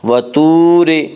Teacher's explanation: وا مدہ وہ جو ساکن ہو، اس سے پہلے پیش و وا مدہ کو ایک الف کے برابر کھینچ کر پڑھیں گے۔ وطور را کو باریک پڑھیں گے، اس کا قاعدہ ہے کہ را کے اوپر زبر اور پیش ہے تو را کو پر پڑھا جائے گا، را کے نیچے زیر ہے تو را کو باریک پڑھا جائے گا، یا را کے نیچے زیر ہے اس لیے را کو باریک پڑھیں گے۔